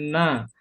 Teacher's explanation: Tepi lidah yang menempel pada langit-langit depan